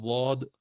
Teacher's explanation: زبان کی سائیڈ جب لگائی جائے اوپر کی داڑوں میں اندر کی طرف، تو اس سے ضاد نکلتا ہے